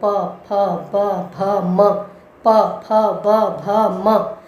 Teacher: इसका मतलब इसका उच्चारण स्थान ओष्ठ है। होठों से आप बोलते हैं प फ ब भ म, प फ ब भ म, यानी आपके होठ बार बार चिपकते हैं और उठते हैं।